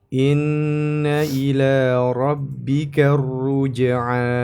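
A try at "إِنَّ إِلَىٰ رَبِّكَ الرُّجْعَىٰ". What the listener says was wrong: Nah, jangan lupa ra tasydid diberi penekanan. Inna ila rabbika ruj'a. Dua harakat. Inna ila rabbika ruj'a.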